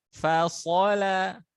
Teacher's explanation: tebal itu bukan karena monyongnya dua bibir, tapi pangkal lidahnya terangkat.